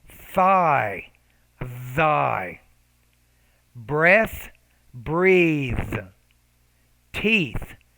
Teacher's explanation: both cases when you're producing the th right so the tongue the tongue is in between the teeth · we call this in linguistics the interdental voiced and voiceless consonants